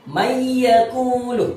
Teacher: Jadi huruf nun itu masuk kepada huruf ya. Huruf nun yang sukun masuk kepada huruf ya, dibaca may yaqulu. Tidak boleh dibaca dengan man yaqulu, itu tidak boleh. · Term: idgham bi gunnah